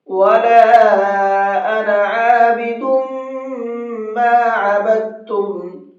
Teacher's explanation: عابد، دال کے اوپر تنوین ہے اور تنوین کے بعد میں میم ہے، تنوین کے بعد میں میم ہوتا ہے تو وہاں پر بھی غنہ کر کے پڑھتے ہیں